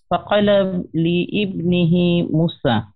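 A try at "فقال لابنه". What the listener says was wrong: ফাকালা লি ইবনিহি, না লিবনিহি, হ্যাঁ এখানে ইবনিটা উচ্চারণ হবে না, ফাকালা ইবনিহি মুসা।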